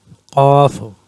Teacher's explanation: Qaf, it is pronounced at the inner throat.